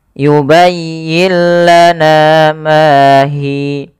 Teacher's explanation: suara Nun ke huruf setelahnya ke huruf lam mengganti menjadi huruf lam kemudian dia tidak boleh ditahan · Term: idgam bila guna